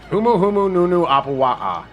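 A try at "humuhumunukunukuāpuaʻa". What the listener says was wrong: Nope, missed a few vowels. Those aren't vowels.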